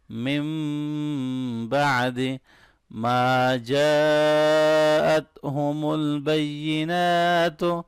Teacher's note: ما الف مدہ ہے، تھوڑا سا لمبا کریں گے